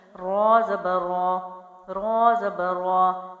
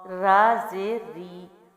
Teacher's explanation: زبر اور پیش کے ساتھ آواز جو ہے موٹی ہو جاتی ہے را کی، اور زیر کے ساتھ باریک